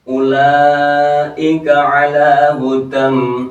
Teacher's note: tulisannya hudan ya, dibaca hudam, idgham diguna